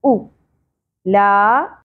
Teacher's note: حمزہ کی پیش کو شارٹ ہی رکھنا ہے